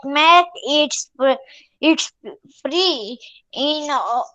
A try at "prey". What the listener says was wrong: Prey. Prey. It's not pre, it's prey. Prey. Prey.